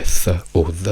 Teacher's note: quindi invece di dire th o the voi dite d, z, perché sono i suoni più vicini che il vostro cervello riesce a trovare